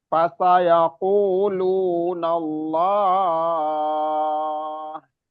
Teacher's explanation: kata Allah ini karena kita berhenti boleh panjang. Boleh sampai 6 harokat. Karena dia jadi mat arili sukun.